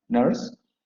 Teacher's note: La palabra nurse se va a pronunciar con la vocal central semiabierta, no labializada, nurse. La palabra north se va a pronunciar con la vocal, bueno, aquí, perdón, aquí no sería nurse, aquí estoy mal, aquí sería nose, recuerden.